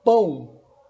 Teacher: na palavra pão, como a letra O, vai produzir o som de U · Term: som semivocálico U